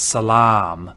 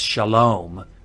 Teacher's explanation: If you know the Arabic word for peace, it's salam. And that long a in Arabic is now an O in Hebrew · that long ah in Arabic is now an o in Hebrew. And so historically, cholam vav was a long ah class vowel, and that's why we put it here.